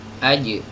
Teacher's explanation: huruf jim ini punya sifat qalqalah ya. Jadi dia dipantulkan, aj.